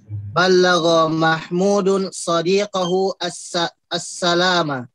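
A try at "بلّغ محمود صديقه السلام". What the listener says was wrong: Ahsan.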